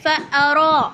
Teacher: را کو کھینچیں گے اور موٹا پڑھیں گے